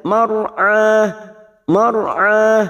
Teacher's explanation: alif lam qamariah karena lam takrif yang bersukun Jal mar'a mar'a ro sukun yang sebelumnya fathah kita baca tafkim atau tebal · mar'ah ra sukun yang sebelumnya fathah, kita baca tafkim atau tebal. Mar'ah, huruf ain kita panjangkan 2 harokat sama mat tabi'i, tidak boleh lebih, tidak boleh kurang.